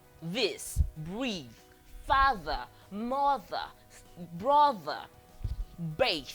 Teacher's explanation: This is a voiced dental fricative.